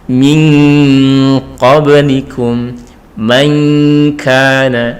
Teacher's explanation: Cara membacanya, nun sukunnya seolah-olah berbunyi eng ya. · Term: ikfa ab'ad